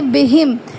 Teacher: تو یہاں پہ اظہار شفوی ہوتا ہے، یہاں غنہ نہیں کریں گے